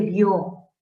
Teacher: por naturaleza recae la fuerza de voz en la O